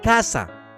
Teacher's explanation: no se distingue entre la /s/ y el sonido interdental de la z o la c ante la e y la i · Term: seseo